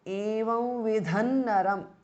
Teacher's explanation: Now, evam vidham ends in an anuswara and naram starts with na, which is a nasal, and it belongs to the tavarga. So the anuswara changes to nu. So evam vidhan naram because of sandhi.